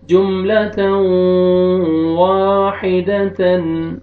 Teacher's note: 4 letter ہیں یمون، ان میں سے واو آ رہا ہے، آپ نے یہاں پہ ادغام کرنا ہے غنہ کے ساتھ